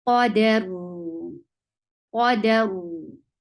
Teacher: You will give sukoon at the end. So ra with sukoon will get sifa of tawassut, and tawassut is a medium flow of sound. So this sound of ra will flow a little.